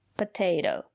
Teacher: the second letter T is pronounced as a fast D